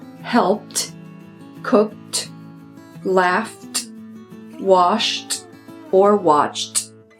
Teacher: f s c h sh or k the e d is pronounced like a t this is called a voiceless sound and it does not add an extra syllable